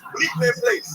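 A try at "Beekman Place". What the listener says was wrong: There's no L in it, first of all.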